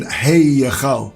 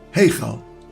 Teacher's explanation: the sound of the Yud is faint and almost concealed within the diphthong A. We don't pronounce a separate Y as in Hey Yechal. · We don't pronounce a separate Y as in Hey Yechal. Rather, it's a blended vowel sound, Heichal. The Yud is hidden.